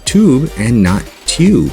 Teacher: word tube does not have this sound after the T because the American accent gets rid of the ya sound after the letters t d n l s and Z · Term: yod drop